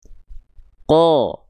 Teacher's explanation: Perhatikan ketika momentum vokal A yang yang harusnya vokal A keluar tapi keluar jadi vokal O karena pangkal lidahnya masih di atas nongkrong tuh ya berbeda sama huruf kaf. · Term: huruf qof